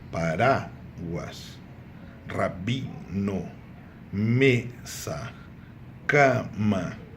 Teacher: Repararam que não é a última, a sílaba tônica é a penúltima. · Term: grave